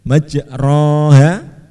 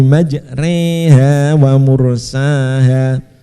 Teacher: Jadi imalah itu mencondongkan alif mendekati kasroh. Jadi kalau kita umpamakan kalau alif itu tegak begini, majroha.